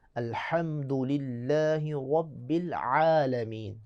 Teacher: الحمد نہیں ہے بلکہ الحمد۔ حا اور عین دونوں وسط حلق سے ادا ہوں گے، حلق کا درمیانہ حصہ۔